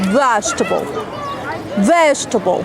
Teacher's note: don't pronounce e that comes after G